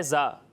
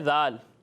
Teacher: یہ زا ہے، اس میں سیٹی کی آواز آئے گی، اور ذال میں سیٹی کی آواز نہیں آئے گی